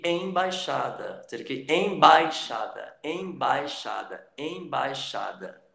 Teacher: O I está bem fraco, o A é forte. Então, o A é a vogal e o I é a semivogal. Então, isso, como está na mesma sílaba, é um ditongo.